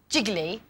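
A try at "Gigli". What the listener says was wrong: It's pronounced Gilly. I don't know why the extra G's in there. We don't say it, apparently.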